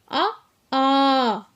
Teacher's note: வாய் திறத்தலாகிய முயற்சியால் பிறப்பது அ, ஆ